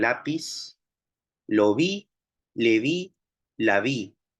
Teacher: Está lateral alveolar en lápiz, lo vi, le vi, la vi, lateral alveolar.